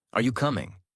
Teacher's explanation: Voice rises at the end. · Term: Natural tone